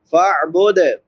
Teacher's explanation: عین حلق کے درمیان سے ادا ہوتی ہے